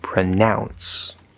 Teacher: the verb to pronounce has the diphthong ow in the middle